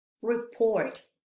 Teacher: estas palabras que terminan en t casi no se escuchó la t del final